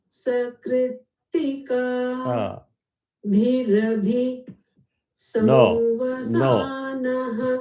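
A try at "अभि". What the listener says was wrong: No, it is not bhirabhi. Bhi is not Anudata. Bhirabhi. Ra Anudata. Bhirabhi. It's different from bhirabhi. Only the Ra has to be dropped. Sakritika bhirabhi samvasanaha.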